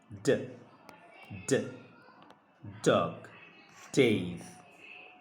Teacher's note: জিহ্বার অগ্রভাগের সাথে উপরের পাটির দাঁতের যে মাড়ি সেখানে একটু চাপ দিয়ে বলতে হবে